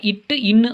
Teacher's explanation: இட்டு இன்னு ஆகிய இரு மெய்களும் நாவின் நுனி அன்னத்தின் நுனிப்பகுதியை பொருந்துவதால் பிறக்கின்றன